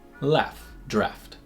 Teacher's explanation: these are both said with a low front vowel